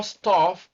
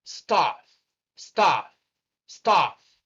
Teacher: It's the same central sound that lies in the middle between A and O. It is not exactly A as in cat, and it is not exactly O as in pot. It is A, staff, staff, staff.